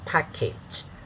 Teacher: the first syllable is stressed with a higher pitch. Second syllable is unstressed with a lower pitch.